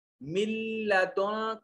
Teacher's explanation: پہلے نون کی آواز نہیں نکل رہی، میم کو براہ راست اس لام سے ملایا جا رہا ہے، ملدن کا، اور نون جو ہے یہ اس قدر لام میں شامل ہو چکا ہے کہ اس کی کوئی صفت باقی نہیں رہی، اس کو ادغام تام کہتے ہیں۔